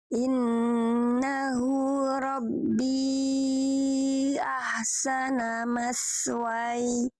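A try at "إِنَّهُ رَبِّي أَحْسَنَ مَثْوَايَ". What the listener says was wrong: Oke, sa-nya mas, lalu wa-nya panjang. Mad aridli disukun ya, jangan mas wai.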